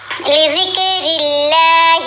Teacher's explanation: یہاں بھی را کے نیچے زیر ہے, را کو بھی باریک پڑھیں گے اور اللہ کی لام کو بھی باریک پڑھیں گے